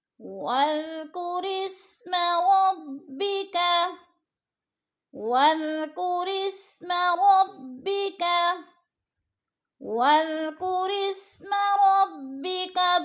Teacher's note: الف خالی ہے، الف کے اوپر نیچے کوئی حرکت نہیں ہے اس لیے الف زائد ہے. را کو سین کے ساتھ ہم نے ملا کر پڑھنا ہے